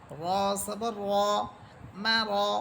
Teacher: কিন্তু আমরা জানি জবরের উচ্চারণ বাংলায় আকারের উচ্চারণ হয়, কিন্তু যেহেতু র এখানে মোটা হবে এই জন্য আমরা র হরফের আকার উচ্চারণ করব না, বরং আকার ছাড়া বলবো